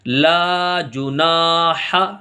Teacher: تو لا کو کھینچیں گے، جو کو جلدی پڑھیں گے، نہ کھینچے گا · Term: الف مدہ